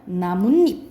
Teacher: 그러면은 여기서는 니은 니은이 첨가된 거야